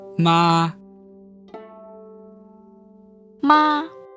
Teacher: We didn't hold it out longer than it needed to be held. We just made sure that the note was comfortably high within our natural speaking voice. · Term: first tone